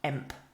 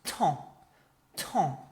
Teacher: It just sounds like this tong to. So your your throat kind of blocks and the sound goes into your nose.